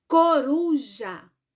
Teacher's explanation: Qual foi o pedacinho mais forte? Foi o ru. Muito bem. Então, a palavra coruja, ela é paroxítona.